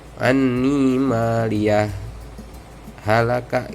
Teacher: Saktah itu berhenti tapi tanpa bernapas. Beda sama waqaf berhenti dan bernafas.